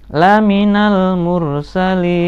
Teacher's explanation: li panjang, mat arid li sukun, nunnya harus dimatikan · laminal alif dianggap tidak ada, langsung masuk ke huruf lam.